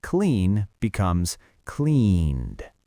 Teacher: Notice how we're stretching the vowel in those words just like we practiced in episode 7 because they end in a voiced d. Clean becomes cleaned. The vowel gets longer.